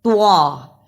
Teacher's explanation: توا کی جگہ پر تا کی آواز نہیں آنی چاہیے، توا کو موٹا پڑھنا ہے